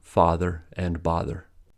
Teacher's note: This phenomenon is called the father-bother merger, since in British English, father and bother have different vowel sounds, father and bother. But in the U.S., both are pronounced with ah sound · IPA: /fɑðər/ and /bɑðər/